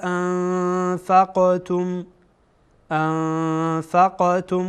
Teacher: قاف از حروف قلقله هست چون ساکن قلقله میکنیم